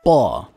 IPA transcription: pˁ